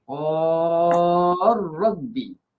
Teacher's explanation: idgham kabir masukkan lam dalam ra